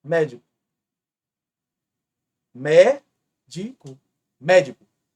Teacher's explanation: é a anti penúltima e é a mais forte portanto é uma proparoxítono não tem muita dificuldade preste atenção essa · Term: proparoxítona